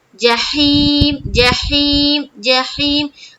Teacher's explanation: ہا ہا ہا یہاں سے نکالیں گے، کہاں سے، حلق سے